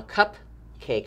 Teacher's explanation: i don't hear the long a in the first syllable cup but i do hear it in the last syllable